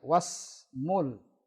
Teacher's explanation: Was langsung, wa langsung ke huruf sin. Alifnya ada, hamzah wasalnya ada, tapi tidak dibaca.